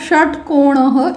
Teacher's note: श यदा मम उच्चारणं भवति तदा जिह्वायाः पृष्ठभागं मूर्धानं किञ्चित् स्पृशति. When I am pronounced, the surface of the tongue slightly touches मूर्धा means the upper part of the palate. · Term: मूर्धन्य